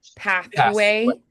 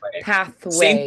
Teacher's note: you'll feel you have to round the lips more after the th